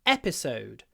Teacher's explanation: the stress is on the first syllable in this word episode the last syllable is the longest because it's a double